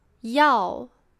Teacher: 要 has the fourth tone. It goes down. It is a very affirmative tone, very sure of something.